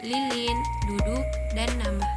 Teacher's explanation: Bunyi apiko alveolar dihasilkan oleh ujung lidah atau disebut sebagai apex yang menyentuh gusi atas atau disebut sebagai alveolum tepat di belakang gigi depan. Ujung lidah bekerja sebagai artikulator aktif sedangkan alveolum menjadi titik artikulasi.